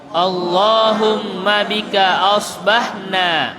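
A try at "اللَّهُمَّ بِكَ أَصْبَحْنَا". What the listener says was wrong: Ya, hati-hati di sini shad bukan sin. Jangan asbahna, asbahna. Itu ya, bukan artinya pagi. Ya, tapi tidak ada artinya. Jangan bilang asbah tapi shad, asbahna, dan hati-hati gigi. Sudah mulai ompong jangan kemudian Allahumma bika asbahna.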